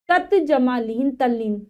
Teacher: ता के बाद ल हो तो ता को ल में बदल देते हैं। ता के बाद ल है तो त को ल में बदल दिया।